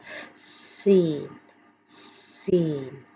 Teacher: جو سین ہے اس کا ساؤنڈ سی ٹی کی آواز دیتا ہے